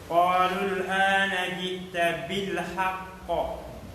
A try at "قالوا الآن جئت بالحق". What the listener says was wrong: لا تمسك اللام قوة حتى تتعب. بالحق بالحق هذا خطأ. لا نقول بالحق إنما نقول بالحق. بالحق.